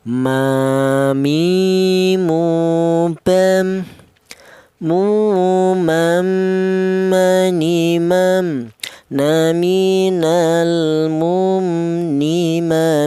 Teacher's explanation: huruf mim ini keluarnya huruf berasal dari kedua bibir yang rapat